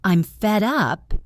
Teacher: I'm fed up is usually spoken with a sharper, tenser intonation.